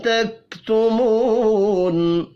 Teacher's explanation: تکتمو واو مدہ ہے, ایک الف کے برابر, اس کو کھینچ کر پڑھیں گے